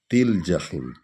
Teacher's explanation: تے کو لام میں ہم شامل کریں گے